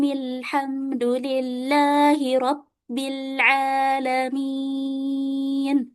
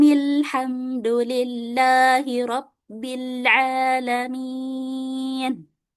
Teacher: Karena semuanya ini wasal atau disambung baru alhamdulillahi rabbil alamin minya di sini baru dibaca dengan empat harakat ya karena yang mad arid sukun hanya alamin ya min ya ini yang dibaca empat harakat